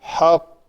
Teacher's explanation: حق قاف کو پر قلقلہ دینے کے لیے یہاں پہ میں نے وقف کیا ہے، ادروائز آگے جا سکتا تھا۔ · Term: قاف کا قلقلہ